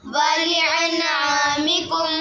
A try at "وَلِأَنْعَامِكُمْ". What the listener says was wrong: हमजा के ऊपर आइन नहीं निकालनी, वलिअनआमिकुम।